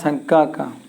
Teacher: उच्चारण और सब देखिए इसको कहते हैं इसका उच्चारण क का क का उच्चारण स्थान होता है कंठ